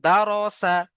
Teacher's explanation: র এর উপরে যদি জাবার অথবা পেশ থাকে, র পুর করে বা মুখ গোল করে পড়তে হবে